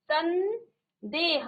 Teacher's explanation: म का न हो जाता है सन देह आधा न का उच्चारण आ रहा है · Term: अनुस्वार